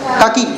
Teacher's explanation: काकी, कक्की नहीं होगा, डबल का नहीं है, यहाँ पर एक ही का वाला